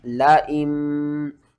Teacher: نیچے والی نون کو نہیں پڑھیں گے، حمزہ کو میم کے ساتھ ملا کر پڑھیں گے اور ساتھ میں غنہ بھی کریں گے۔ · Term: اقلاب